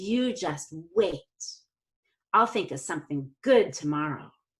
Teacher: we do not stress context setting time adverbials such as today tomorrow yet anymore or again · instead I'm going to stress good